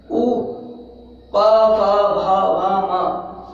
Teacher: जैसे हम बोल के देखें, उ, प, फ, भ, भ, म, तो इन सभी वर्ण को बोलते समय जो हमारे ओष्ठ हैं वो वर्तुलाकार हो जाते हैं। ओष्ठ की सहायता से, होठों की सहायता से ही बोले जाते हैं, तो इनका उच्चारण स्थान होता है ओष्ठ।